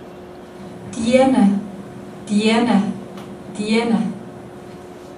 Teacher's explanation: where the D begins there is no voicing activity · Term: voiceless D